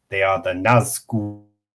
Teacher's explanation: It's just the extended U sound and the dark L.